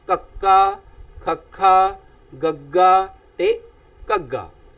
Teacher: ਜੀਭ ਦਾ ਅੰਦਰਲਾ ਹਿੱਸਾ ਭਾਵ ਕਾਂ ਵਾਲਾ ਹਿੱਸਾ ਜੀਭ ਉੱਪਰ ਨੂੰ ਉੱਠਦੀ ਹੈ ਤਾਂ ਮੂੰਹ ਦੇ ਵਿੱਚੋਂ ਇਸ ਧੁਨੀ ਦਾ ਉਚਾਰਨ ਹੁੰਦਾ ਹੈ। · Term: ਕੋਮਲ ਤਾਲਵੀ ਵਿਅੰਜਨ